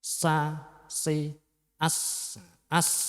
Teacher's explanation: juga untuk lidahnya benar-benar sudah pas di makhrojnya tersebut yaitu di ujung lidah mendekat di antara gigi seri atas dan bawah · Untuk sin itu makhrajnya di ujung lidah menghadap dan mendekat di antara gigi seri atas dan bawah. Jadi ujung lidahnya itu di antara gigi seri atas dan bawah, berarti di tengah-tengahnya ujung gigi di antara gigi seri atas dan bawah.